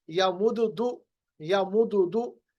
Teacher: अब इसमें आसानी ये हो गई कि हमारे पास जो इससे पहले हरफ है यानी फा कलमा यानी मीम, यहाँ पर वो सुकून के साथ है, तो दाल की जो हरकत है पेश वो सुकून वाले हरफ पे चली जाएगी और दाल साकिन बनेगा